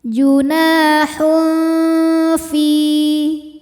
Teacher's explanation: Dengung dan kesamarannya sama, seimbang ya, karena makhraj huruf fa tidak terlalu dekat, tidak terlalu jauh dari nun. Junahun fi hukumnya adalah mad tabi'i zahiri. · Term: ikhfa awsat